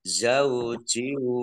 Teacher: kasroh tanwin bertemu dengan huruf wawu, idgham bi gunnah juga, masuk dengan mendengung wawu, ditandai wawunya ada tasdidnya.